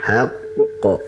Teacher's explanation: Ditahan dulu sebentar qafnya karena bertasydid.